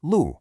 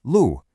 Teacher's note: It's a nice, sharp, falling tone. Lu. It means land.